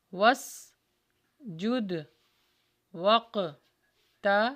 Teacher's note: دال پہ بھی قلقلہ ہوگا، قاف پہ بھی قلقلہ ہوگا